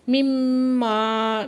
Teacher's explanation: مما میم مشدد ہے غنہ واجبہ کریں گے.